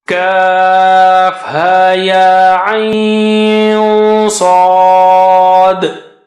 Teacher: When you merge ayn with sad, you have ikhfa there.